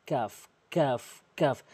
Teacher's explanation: জিহ্বার গোড়া হতে একটু আগে বাড়াই উপরের তালুর সঙ্গে লাগিয়ে উচ্চারণ হয়